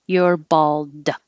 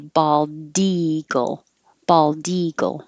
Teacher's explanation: if there's a word after it, like bald eagle, now you'll release the D.